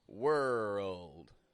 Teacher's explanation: it's got a w it's got an R it's got a dark l